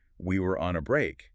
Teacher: Defensive with strong stress on we were and maybe on break. It's dripping with a very specific emotional tone.